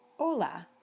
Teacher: You don't even pronounce the H in Spanish. It is totally invisible.